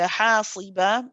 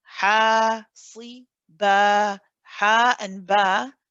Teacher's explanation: The ha is held for 2 counts because of the mad alif here, your mad tabi'i or your mad asli.